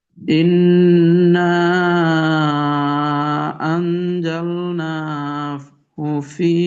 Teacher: এখানে কিন্তু মাদ্দে মুনফাসিল, ইন্না, এটাকে ছোট করা যাবে না, তিন আলিফ পুরো করতে হবে কমপক্ষে।